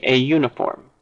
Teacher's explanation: Uniform is tricky because it actually begins with a vowel, but it doesn't begin with a vowel phoneme. It begins with a consonant phoneme because this U is pronounced Y, U.